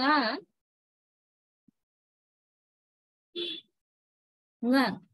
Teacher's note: because of the influence of the following k or g, this n becomes velar. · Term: velar nasal